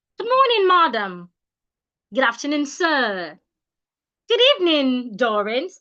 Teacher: you use rising intonation, especially when you add a title to it.